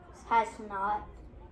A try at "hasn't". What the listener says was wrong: It would have been, but remember there's an apostrophe there, so now it becomes int. Can you say int? Int. Okay, so this is hasn't. Together.